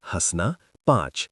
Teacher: अनुनासिक उच्चारण मुख और नासिका दोनों से